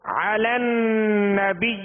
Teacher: عین کو وصف حلق سے ادا کریں گے